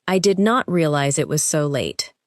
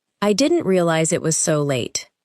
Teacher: Notice how did not contracts and how the unstressed words become lighter. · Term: natural version